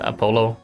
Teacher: Apollo with emphasis on the second syllable